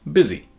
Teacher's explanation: In the East Midlands dialect, which includes London, the U became I, giving us busy